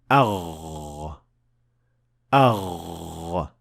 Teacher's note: the root of the tongue is raised to be almost touching the soft palate